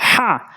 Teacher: যেমন প্রথম পর্বেতে বলেছি আলহামদু বলি, বলতে হবে আলহামদু। এখানে হা উচ্চারণ করে বলতে হবে, হা হলকের মাঝখান থেকে হা। সবচেয়ে বেশি যে ৫টি হরফ ভুল হয় তার প্রথমটি হচ্ছে হা, হা এরকম চাপ দিয়ে ভর দিয়ে উচ্চারণ করব।